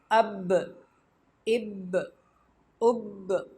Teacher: با حروف قلقلہ میں سے ہے، اس کو ہلا کر پڑھیں گے